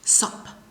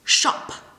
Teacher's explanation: the north e Eastern people tend to read s and Sh oppositely and people from the South barely pronounce this sh sound in